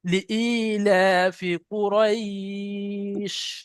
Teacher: এখানে একটা খুব সুন্দর কায়দা, যেটা হলো র ইয়া দেবার রয় ইয়াই লিন, ইয়াই লিনের পরে শিনের উপরে থামতে হচ্ছে, সাকিন করতে হচ্ছে। ইয়াই লিনের পরে শিনের উপরে সাকিন করার কারণে এখানেও মাদ্দে আরজি ওয়াকফি লিনই হবে। তাই এখানে 3 আলিফ পরিমাণ টান দিয়ে পড়তে হবে। লিইলাফি কুরাইশ, টান দেন শেষে।